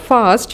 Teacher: word fast it has the blend at the end in the word fast you can hear the sound of s and t distinctly separately